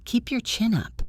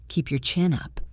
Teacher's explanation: Feel the upward movement in the intonation.